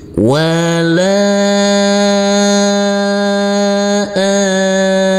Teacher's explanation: Baru masuk ke huruf mim yang bertasdid. Huruf mim kita tekan, kita tahan dan kita dengungkan. Wala amin. Dan huruf mim ini boleh dibaca panjang dengan 2, 4 maupun 6 harokat.